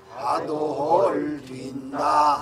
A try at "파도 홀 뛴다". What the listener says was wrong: 거기 항상 덜 올라갔었어. 거기 선생님 음이 뭉개져 가지고 거기서 이렇게 덜 올라간 거를 똑같이 그렇게 하면 안 되지. 파도 홀 뛴다. 그렇게 음이 명료해.